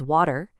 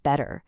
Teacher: in a lot of American English, a T that's between two vowels gets softened into this quick D sound. It's called a tap.